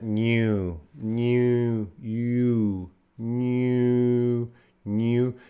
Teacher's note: the N is voiced right mmm you could feel that